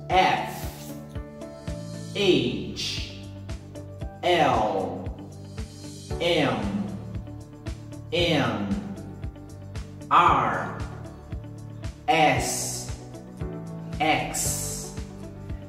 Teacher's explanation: Essas consoantes, quando eu falo elas em voz alta, o som inicial de todas elas é o som de uma vogal.